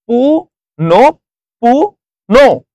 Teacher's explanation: বিসর্গের পরের যে বর্ণটা আসবে সেটা দুইবার উচ্চারণ হচ্ছে